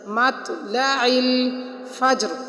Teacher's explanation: ان حروف کو تھوڑا ہلا کر قلقلہ کر کے پڑھتے ہیں، تو ہم نے پڑھا مطلع الفجر، فجر میں بھی جیم کو تھوڑا ہلا کر پڑھیں گے کیونکہ حروف قلقلہ میں سے ساکن حروف آ گیا۔